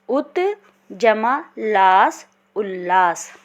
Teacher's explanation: त का मेल यदि ल से होगा तो ये परिवर्तन ल में बदल जाएगा।